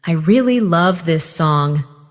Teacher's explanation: Falling tone for statement.